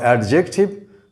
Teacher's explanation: the stress is on the first syllable